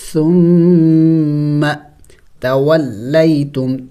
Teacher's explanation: ثم میم مشدد ہے غنہ کریں گے اور ثا نرم حروف میں سے تو نرم پڑھیں گے. ثم